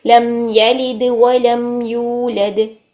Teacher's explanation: तो तमाम के तमाम लाम यहां पर बारीक ही पढ़े जाएंगे किसी भी कंडीशन में आ रहे हैं क्योंकि ये सिंपल लाम